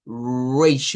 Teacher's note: a esa se le conoce como la consonante alveolar aproximante Sonora